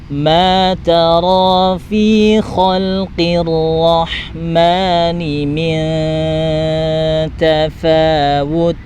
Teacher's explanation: nun sukun bertemu dengan huruf ta, maka dengungnya dengung tipis, arahkan ke huruf ta ya.